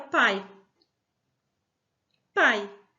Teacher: Na palavra pai temos uma vogal, que é o A, pronunciamos mais forte, e o I, que é a semivogal, que pronunciamos mais fraca.